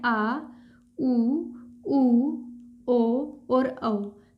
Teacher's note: पश्च स्वर जो जीव के पिछले हिस्से से बोले जाते हैं